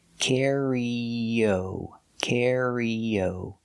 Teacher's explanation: To link the sound E with the O, you have the y sound like yellow.